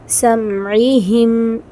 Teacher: اچھا یہاں کیا مسٹیک کرتے ہیں؟ جب ہم میم کے بعد عین آتا ہے نا تو مسٹیک یہ ہوتی ہے کہ ہم میم کو ہلا دیتے ہیں فوراً سے پڑھنے کے چکر میں. سمعہم، یہ جو ساؤنڈ آتی ہے یہ ساؤنڈ رونگ ہے، ٹھیک ہے.